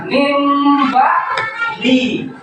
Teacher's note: ditahan kira-kira 2 harakat, ya, seraya mengeluarkan suara ikhfa atau sedikit mendengung · dengan suara yang sama antara mim dan ba pada akhir bibir, ya. Tuh, di antara bibir kalian. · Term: ikhfa safawi